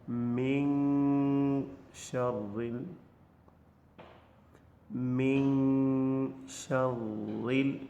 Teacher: the mouth is going to be opened without articulating the noon sound by the touching of the tongue with the upper hard palate. So you do not articulate noon. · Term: al-akhfa